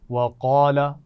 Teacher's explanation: قاف کو موٹا پڑھا جائے گا اور اس کے بعد الف مدہ بھی ہے تو کھینچ کر پڑھیں گے